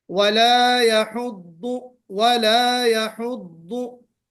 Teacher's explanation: दुआद को हम मोटा पढ़ते हैं, इस्तिला की सिफत आएगी इसमें, फिर उसके बाद इतबाक है जी